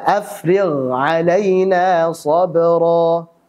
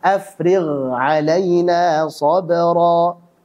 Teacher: Jelaskan ghainnya, dialirkan suaranya.